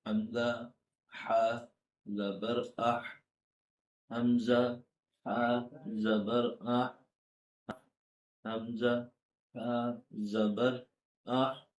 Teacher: ہا کا مخرج ہے درمیانی حلق